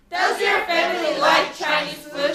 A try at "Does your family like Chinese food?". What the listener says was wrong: Chinese 할 때 여러분들 CH 사운드만큼은요. Chinese가 아니라 입술을 살짝 모아주셔야 돼요. 같이 Chinese.